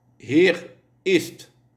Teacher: pas de liaison entre hier et ist